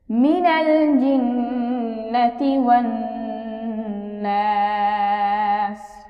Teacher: এখানে মাদের হরফের বামে হরফ ওয়াকফ হয়েছে মাদ্দে আরজি, আমরা 3 আলিফ টান দিয়ে পড়ব